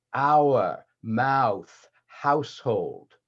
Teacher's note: So Irish and OP also overlap with the ow vowel, the vowel in mouth. Now, in both General American and RP, the jaw is down for the ow